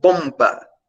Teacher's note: ele é usado antes do p e antes do b porque o m é uma bilabial os dois lábios eles se encostam na hora da produção do som